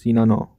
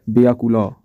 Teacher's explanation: শব্দের অন্তে অকারে স্পষ্ট উচ্চারণ ঘটে